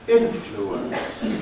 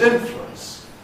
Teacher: Influence can be three syllables, but we can also say it as influence, two syllables.